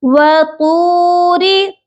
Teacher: طا heavy letter ہے، اس کو صرف آپ نے پر پڑھنا ہے، موٹا کر کے پڑھنا ہے